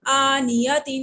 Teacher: حمزہ کھڑی زبر آ، نون زیرنی، آنی، یا زبر یا، آنیہ، تا دو زیر تن، آنیہ تن۔ تنوین ہے تو غنہ کریں گے، کھڑی زبر کو کھینچیں گے۔ آنیہ تن، وقفن آنیہ، گول تا کو وقفن میں ہم ہا میں بدل دیتے ہیں۔